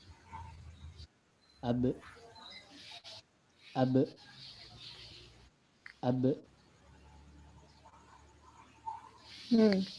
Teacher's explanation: Huruf ba termasuk ke dalam kategori huruf qalqalah, yaitu huruf yang ketika sukun dibaca memantul.